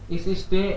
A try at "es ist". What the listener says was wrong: इस ईस्ट नहीं, एस ईस्ट।